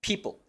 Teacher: entre la p y la l hay un sonido vocálico muy pequeño es una shua pero una shua todavía más reducida que de lo normal people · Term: schwa